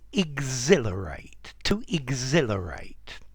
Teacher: the H is silent